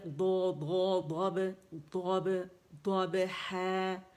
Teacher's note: ہا بھی باریک ہے اور با بھی باریک ہے